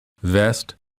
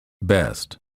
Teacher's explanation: for the V sound the upper teeth touch the lower lip for the B both lips touch and fully close so that no air escapes